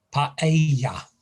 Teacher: with the stress in the middle syllable